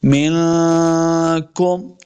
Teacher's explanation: اقرب الیہ منکم، نون ساکن کے بعد کا حروف اخفاء سے ہے، یہاں پہ اخفاء کا قاعدہ ہے، غنہ کر کے پڑھیں گے۔ منکم، اس کاف کو موٹا نہیں کرنا۔